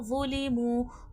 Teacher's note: حرف مستعلیہ ہے، موٹا حرف ہے، موٹا کر کے پڑھا جائے گا اور نرمی والا بھی حرف ہے، نرمی سے بھی پڑھا جائے گا